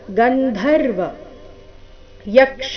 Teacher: ಯ ಮೇಲೆ ಆಘಾತ ಕ್ಷ ದೀರ್ಘ